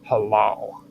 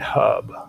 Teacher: For instance, in Arabic, the voiceless pharyngeal fricative that looks like an H appears in words such as halal